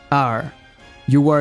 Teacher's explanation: esse R é só seguir igual a imagem que tá aparecendo a língua vai dar uma enrolada sem tocar no céu da boca e faz o som R